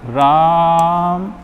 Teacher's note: Mostly या अधिकतर जैसे आपने देखा होगा कि किसी का नाम पुकारा जाता है, तो एक होता है बोल देते हैं कि राम, ये बोलते हैं राम, तो ये हो रहा है मतलब कि दीर्घ स्वर से भी ज़्यादा समय खिंच रहा है। तो अगर इसको हम बोलेंगे तो राम, तो ये ऐसे चला जाएगा, मतलब लंबा जाएगा, मतलब इसके उच्चारण में और अधिक समय लगेगा। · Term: प्लुत स्वर